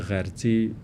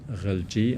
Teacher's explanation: And then the R switches to L, and that's pretty common.